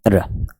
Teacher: वह व्यंजन जिसके उच्चारण में जिह्वा को 2-3 बार कंपन करना पड़ता है। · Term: लुंठित